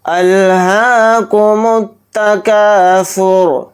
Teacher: را کو یہاں پر ساکن کر کے پڑھیں گے، را پر پیش نہیں پڑھیں گے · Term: حالت وقف